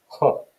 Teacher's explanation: you've got a huh sound which is a glottal fricative